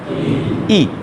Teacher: ई का उच्चारण स्थान तालु है।